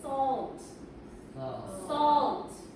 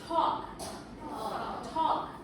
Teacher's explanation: It's AL, yeah, but no L. The L sound, you don't pronounce it. Okay, no L, just short O.